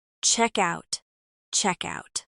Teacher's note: In checkout, the K links to out.